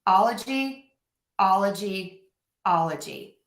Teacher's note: The tricky bit here is that the stress is going to go on the all. So we're going to stress the all in ology.